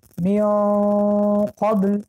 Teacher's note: حرف قاف که مخرجش قفای زبان می باشد، قفای زبان به کا می رسد